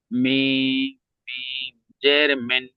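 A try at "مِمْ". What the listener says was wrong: মিন নয়, মিন নয়, মিম।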